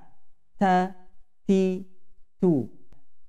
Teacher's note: huruf yang keluar dari ujung lidah bertemu gusi atas. Tarful lisan ma'a ma yalihi min usulih thanayal ulya wa minhu tukhraju at-ta wad-dal wat-ta, yaitu ujung lidah bertemu gusi atas. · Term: huruf ta